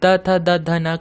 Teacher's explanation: जब आप त थ द ध न का उच्चारण करेंगे तब आपका जबान जो है वो आपके दांतों को टच करेगा, इसलिए त थ द ध न का उच्चारण स्थान हो जाएगा दंत।